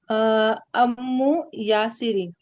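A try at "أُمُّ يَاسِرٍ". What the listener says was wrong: अम्मू नहीं होता। अम्मू तो वो होता है ना ऐन से। ये उम्मू है। उम्मू। उम्मे हबीबा याद रखे ना, उम्मे हबीबा। उम्मू है ना। पेश लगानी है यहाँ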